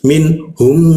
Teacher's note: Nah, jika mim bertemu ba itu kita artikan sebagai gumam ya. Jadi bergumamnya itu di huruf mim kita tahan dua dua gumaman